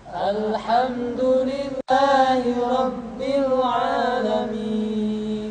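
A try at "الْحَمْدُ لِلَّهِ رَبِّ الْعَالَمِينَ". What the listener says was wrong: Jadi kita tidak boleh membaca Alhamdulillahi rabbil alamin. Ya, jadi ketika mengucapkan a di sana kepanjangan.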